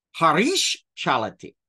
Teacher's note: the s doesn't drop, doesn't turn into a visarga, but it shifts into an appropriate sibilant